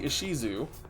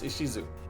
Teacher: tap your tongue to end certain consonants and vows sooner because you would say ISU right with a longer u sound but he goes isisu and cuts it really sharp